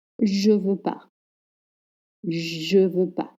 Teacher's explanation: For example, je ne veux pas, I don't want, is often pronounced je veux pas. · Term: Drop the ne